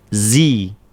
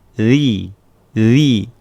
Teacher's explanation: ujung lidahnya bertemu dengan ujung gigi. Eh dzi jangan terlalu banyak keluarnya dikit aja ujungnya aja bukan gini.